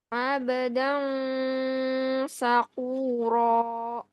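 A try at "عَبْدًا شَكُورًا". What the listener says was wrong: Bukan sa tapi sya sya.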